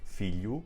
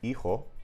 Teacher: these sounds there are all F's in other Romance languages but they become silent sounds in Spanish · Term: silent H